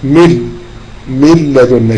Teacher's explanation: شوف النون ما عليهاش حاجة خالص، يبقى ده ايه ادغام بغير غنة